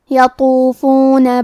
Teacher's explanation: کلمت یطوفون میں حرف الطو ہے، طو حروف التفخیم میں سے ہے، تو ہمیں طو کو بھاری آواز میں پڑھنا ہے